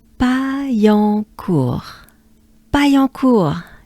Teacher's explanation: So ya and en will give us yon.